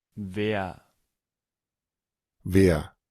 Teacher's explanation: la ER normalmente la vemos que se pronuncia como una E y una A media. En algunos casos también puede sonar como una R del español.